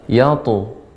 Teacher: qalqalah pada ta ini tebal, yatu. Kemudian azid jadi jangan tertahan dengan hamzah.